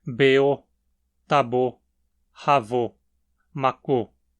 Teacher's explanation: No pretérito perfeito, a terminação é um O tônico.